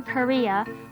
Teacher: similar to the weak k sound as in ski or kid the kh sound is basically the sound with a strong aspiration